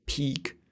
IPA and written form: pik (peek)